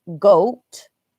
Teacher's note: goat, which kind of has a little W with your lips a little bit